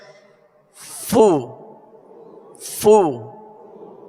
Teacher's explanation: اس کی مخرج فا کا اوپر کے دونوں دانتوں کے کنارے اور نچلے ہونٹ کا تر حصہ